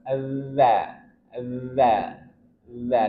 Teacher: ujung lidah dari perm atasnya bertemu dengan ujung dua gigi seri atas.